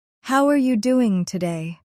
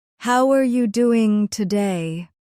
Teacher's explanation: Notice how the voice rises at the end. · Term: rising tone